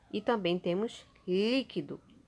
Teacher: a sílaba mais forte não é a última e nem a penúltima mas sim a antepenúltima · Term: proparoxítonas